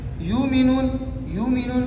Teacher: حمزہ ساکنہ سے پہلے پیش ہو تو واو سے تبدیل کریں گے